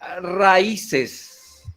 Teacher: dice porque contiene si contiene diptongo o contiene un hiato y se rompe todo porque se carga la voz en la vocal débil